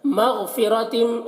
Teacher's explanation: الا لام میں کھڑا زبر ہے، ایک الف کے برابر کھینچ کر پڑھیں گے اور یا کو نہیں پڑھا جائے گا۔ مغفرتم، غین کو پور پڑھنا ہے اور قلقلہ نہ ہونے پائے اس کا خیال رکھنا ہے